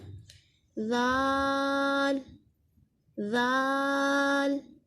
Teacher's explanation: वो हमने ऊपर वाले दांतों के किनारे से लगाना है, यानी ज़ुबान को हमने ऊपर वाले दांतों के किनारे से लगाएंगे तो अदा होगा ज़ाल। यही सा का मखरिज है और यही ज़ाल का मखरिज है।